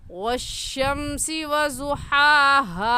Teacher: पहली हा हलक के दरमियान से निकलती है तो हलक के दरमियान से निकाल कर पढ़ेंगे और दूसरी हा हलक का आखिर जो सीने की तरफ है उस हिस्से से निकाल कर पढ़ेंगे